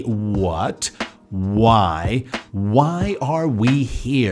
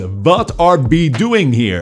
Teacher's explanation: In Dutch, the W is made by putting the front teeth against the bottom lip.